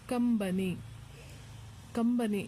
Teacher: ಅನುಸ್ವಾರಕ್ಕೆ ಮ ಸೌಂಡ್ ಬಂದಿದೆ